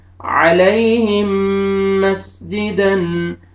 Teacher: मीम साकिन के बाद मीम मुतहर्रिक है, आपने मीम को मीम के साथ मिलाना है , मीम को इस मीम में दाखिल करेंगे और ये मीम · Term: इदगाम